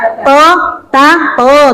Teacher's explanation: Ujung lidah kena belakang gigi seri. Gusi belakang gigi seri atas, ya kan?